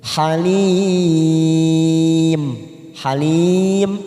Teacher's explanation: Mad Arif lissukun empat harakat kita panjangkan · dengan huruf H ya huruf H termasuk huruf izhar halqi yaitu bacaan idhar halqi kita baca jelas tanpa mendengung